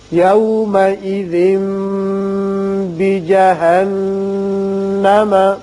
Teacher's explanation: تنوین کے بعد جب با آ جائے تو وہاں اقلاب ہوتا ہے اور میم کسی آواز نکلتی ہے، ایک الف کے برابر ٹھہرتے ہیں. یہاں نون مشدد پر بھی غنہ کریں گے.